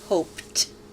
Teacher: The ed is pronounced t because hope ends with an unvoiced sound.